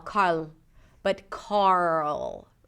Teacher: as you pronounce the R sound, you want to create tension in the back for the dark L.